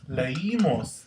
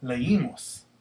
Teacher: Once again, it's the I that's stressed, so the I needs to be accented since you and I are normally not accented, are not stressed.